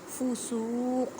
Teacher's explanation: قاف کو ادا کرتے وقت خیال رکھیں کہ کاف کی آواز نہ ہے کیونکہ یہ حروف مستعلیہ یعنی موٹے حروف میں سے ہے